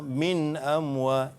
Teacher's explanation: Izhar halqi jadi bacanya dengan jelas dan nyata. Jangan dengung